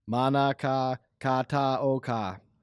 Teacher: with every single one of the A sounds pronounced the same and no emphasis on any one syllable